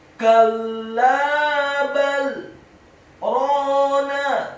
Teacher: huruf ra-nya dibaca tafkhim tebal fathah dua harokat karena setelahnya ada alif, kemudian huruf nun-nya dibaca tipis fathah satu harokat.